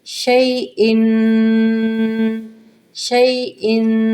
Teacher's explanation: شین زبر یا شئی، دیکھیں یہ حروف لین کا قاعدہ یہاں پہ آ رہا ہے، شین زبر یا شئی، حمزہ دو زیر ان، شئی ان، شئی کو جلدی ادا کریں گے، حروف لین کا قاعدہ ہے، تنوین ہے، اس کو 2 سیکنڈ تک اپنے منہ میں رکھ کے غنہ ادا کریں